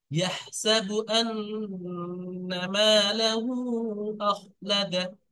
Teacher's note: নুনের উপরে মোসাদ্দাদ আসছে, সেজন্য করে আন্না অবশ্যই একাধিক পরিমাণ গুন্না করবে।